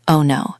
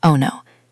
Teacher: Do you hear how the voice slides down?